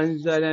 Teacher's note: النون الساكنة بعد حرف الزاي إخفاء حقيقي